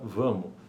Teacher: cancelamento do fonema S, também em posição de sílaba átona final